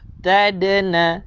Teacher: Dal ada qalqalah sughra.